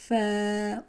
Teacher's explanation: ऊपर वाले दोनों दांतों का सिरा और नीचे के होठ का अंदरूनी हिस्सा